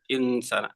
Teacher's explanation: In dibaca samar ya. Namanya ikhfa.